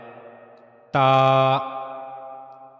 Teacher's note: اوپر کے 2 سامنے والے دانتوں کے مسوڑوں کی لکیر کے ساتھ جب جا کر ملتا ہے تو وہاں سے تا ادا ہوتا ہے، تا۔ زبان کی نوک کا اوپری حصہ اور یہ جا کر اوپر کے 2 سامنے والے دانتوں کے مسوڑوں کی لکیر کے ساتھ ملتا ہے تو تا ادا ہوتا ہے۔